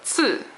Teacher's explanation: It's a CI, and this is a 4th tone 赐. The way that you say the C when you see it in Roma pinyin is a TS sound with your tongue.